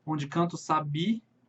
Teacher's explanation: a última sílaba tônica, calhou de ser realmente a última sílaba da palavra